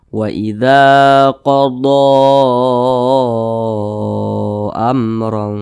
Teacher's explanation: Jaiz munfasil panjangnya itu boleh EMP harakat boleh juga lima harakat boleh empat ketukan 1 2 3 4 hingga lima ketukan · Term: Mad Jaiz munfasil